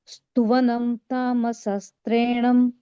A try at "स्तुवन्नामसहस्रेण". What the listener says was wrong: There's no na, there's only in. Stuvan nama.